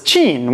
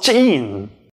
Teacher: the word for pimple is /tʃín/, with a regular [tʃ], but the word for small is /tʃ'ín/ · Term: ejective affricates